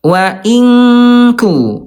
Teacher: Ada berjauhan tempatnya. Nun ada di ujung lidah, kaf ada di pangkal